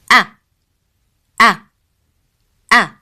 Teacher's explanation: The sound of a, as in alif, is pronounced from the lower part of throat.